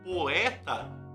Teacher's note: se é uma vogal uma semivogal você desce o queixo Então quando você fala poeta mesmo que você não queira você sobe três vezes você desce três vezes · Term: hiato